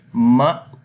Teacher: this is hamza and hamza has a sukoon. We make jerking sound as we say ma.